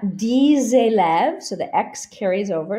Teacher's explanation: so the X carries over, liaison, because élève starts with a vowel